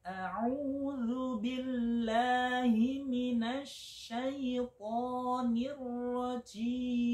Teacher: jim saya itu dinilai hames, ada desisnya, sehingga masih salah